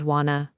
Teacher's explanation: the simple words want to. These words blend together to become the soft sound wanna.